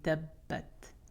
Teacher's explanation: But shadda is the exception. Because that sukoon is actually not there, we're not going to apply qalqala inside of a shadda.